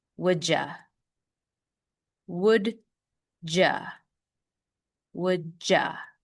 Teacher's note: The next rule with the word you is when there's the letter D right before. The D transitions into a Y, so it has a middle sound of J. Remember, you becomes ya, but now we have that J sound, so it becomes ja.